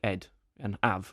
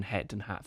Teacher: people in London might say like ed and have rather than head and have